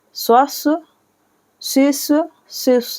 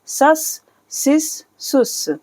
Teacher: सिस सुस सीन है और यह स्वाद है स्वस शिस शिस यहां पर स्वाद को थोड़ा मोटा पढ़ा जाएगा और सीन को बारीक